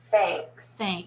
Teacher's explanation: Notice how it gets kind of nasal because of the N?